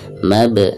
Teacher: ketika sukun asli ya, bukan karena waqaf, maka dihukumi qalqalah sugro ya. Cara membacanya harus ada pantulan mab, seperti itu ya.